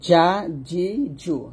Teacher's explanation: জিম জিব্বার মধ্যখান উপরে তালুর সঙ্গে লাগবে,